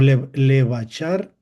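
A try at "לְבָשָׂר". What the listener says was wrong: Levasar. Toma en cuenta que aquí el punto está a la izquierda. Porque entonces no es shin, es sin.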